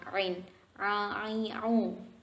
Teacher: makhraj tepatnya itu di daerah katup tenggorokan atau epiglotis bertemu dengan dinding tenggorokan